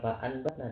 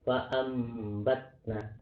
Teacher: Bunyi nun sukun atau tanwin berubah menjadi huruf mim ya, dibaca samar dan ditahan selama setengah alif disertai guna, di guna sama seperti idgham biguna ya. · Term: iqlab